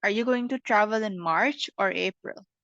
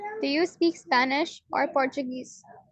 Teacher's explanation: the first one you put more emphasis on, so that's going to be the rising intonation, and the second one is the falling intonation